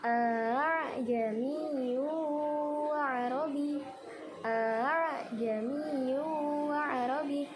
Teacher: Menyederhanakan hamzah yang kedua. Jadi bacanya itu harus diseret. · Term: tashil